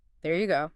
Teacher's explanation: A rising tone might make it almost a question, like, is this what you wanted?